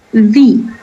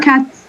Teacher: here in hand, here we pronounce the S as Z, like hands, walls, dogs.